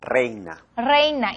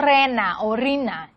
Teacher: no puede haber monoptongación, es decir, transformar el diptongo en una única vocal